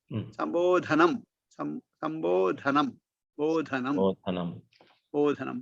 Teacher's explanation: बा इति अल्पप्राण, ध इति महाप्राण